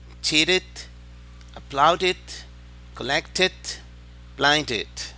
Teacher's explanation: Otra vez, cuando los verbos terminan en los sonidos T o D, se pronuncia it.